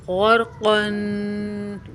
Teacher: قین بھی پر حروف ہے، را بھی پر حروف ہے اور قاف بھی پر حروف ہے، ان تینوں حروف کو موٹا کر کے پڑھیں گے۔ غرقن، قاف کو قاف کی ادائی گلے سے نا صحیح طریقے سے کرنی ہے، قاف اور کاف میں فرق واضح ہونا چاہیے۔